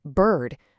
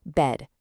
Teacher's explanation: the long drawn out bird versus the short abrupt bed